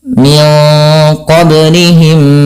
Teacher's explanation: Cara membacanya memasukkan mim yang pertama kepada mim yang kedua. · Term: idgam mimi